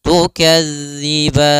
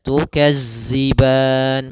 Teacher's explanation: Maka latihannya agar tidak terbaca dengan huruf zai itu ujung lidah kita menempel dengan gigi seri atas sehingga terdengar dengan sempurna untuk makhraj daripada makhraj huruf dzal